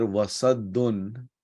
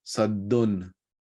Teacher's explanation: It's tanween or noon sakin followed by a harf halkiya. Then you pronounce the tanween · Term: izhar